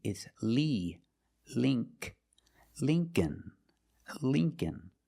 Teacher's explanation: The dictionary shows it as a short I, the sound I, like thin. But it's the long E.